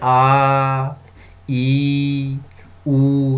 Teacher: उच्चारण में 2 गुना समय लगे, आ, ई, ऊ, दोगुना समय लग रहा है ना, इन्हें दीर्घ स्वर कहते हैं।